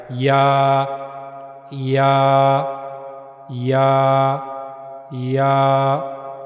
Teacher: जबान का जो दरमियानी हिस्सा है, यह मुंह के ऊपर वाले हिस्से की तरफ जाएगा। उसकी तरफ उठेगा। लेकिन मिलेगा नहीं उससे। अगर मिलेगा, तो फिर गलत हो जाएगा।